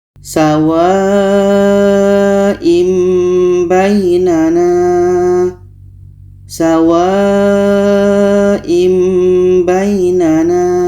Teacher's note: Jadi ketika tanwin bertemu ba, ini hukumnya iqlab. Bunyi tanwin kita ubah kepada mim dan di sini ada dengung.